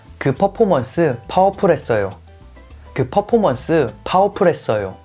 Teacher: Drop the R's at the end of syllables and change the F sound to P sound.